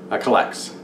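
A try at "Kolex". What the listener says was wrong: A Colex, with the emphasis on the wrong syllable.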